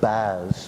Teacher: your jaw raises uh with your tongue because the tongue has to go to the roof of the mouth to produce a fricative